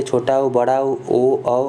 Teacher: जो मुख होता है अपना वो गोलाकार बन जाता है, वृत्त बन जाता है। जैसे आप बोल के देख लीजिए, ऊ बोल लीजिए, छोटा ऊ, बड़ा ऊ, ओ, औ और आ बोल लीजिए, ये हो जाएंगे वृत्तमुखी।